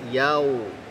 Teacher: di rongga mulut bunyinya yau, bukan di khayshum, bukan rongga hidung